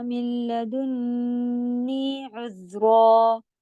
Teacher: ذال کے لیے زبان کی نوک کے ساتھ ساتھ آواز چلے گی